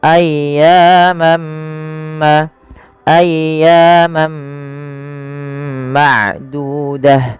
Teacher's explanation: Maka ketika ada tanwin bertemu dengan huruf mim, yaitu langkahnya adalah masukkan tanwinnya kepada huruf mim dan diganti bunyinya. Awalnya ayyaman menjadi ayyamam ma'dudah, ya ditahan dan diganti suaranya huruf mim, maka dinamakan dengan idgham.